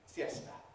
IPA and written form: fjesta (fiesta)